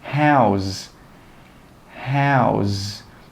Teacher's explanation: We join them together and we say 'howz, howz.' And that last sound should be like a Z sound. Your throat should vibrate.